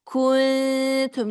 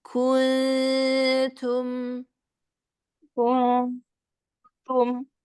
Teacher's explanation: Jadi lidahnya bersiap ke makhraj ta. Nunnya samarkan. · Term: ikhfanya tipis